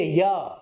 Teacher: या का जो उच्चारण स्थान है वो कहां है, तालु है, यानी कि आपके मुख की ऊपर की जो छत है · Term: तालव्य